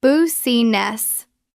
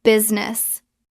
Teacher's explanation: We drop the I in the middle. It becomes two syllables.